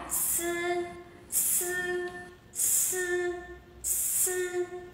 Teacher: Khi phát âm thì đầu lưỡi sẽ tiếp cận với răng cửa dưới và sẽ tạo một sự ma sát đi ra ngoài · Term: Âm S